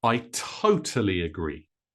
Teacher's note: Notice that agree becomes a little quieter and a little shorter, so faster.